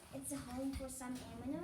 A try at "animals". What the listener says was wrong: They're animals. Animals. You were saying it backwards. Animals.